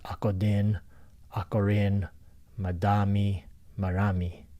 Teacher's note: in Philippine languages, you'll see that the D and the R is interchangeable